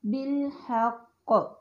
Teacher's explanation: تو ہم دیکھتے ہیں سب سے پہلا مرتبہ ہے مشدد حرف پر وقف کیا جائے، تو وہاں سب سے زیادہ شدید قسم کا قلقلہ پایا جاتا ہے، جیسے بالحق۔ بالحق یعنی قاف جب ساکن ہے اور تشدید والا بھی ہے، اس پہ سب سے شدت کا قلقلہ ہے جو کہ نمایاں ہوتا ہے۔ اس کے بعد ہے ساکن حرف پر وقف کیا جائے، یعنی سکون ہے لیکن وقف ہو رہا ہے اور اس میں بھی قلقلہ نمایاں ہے، السجود۔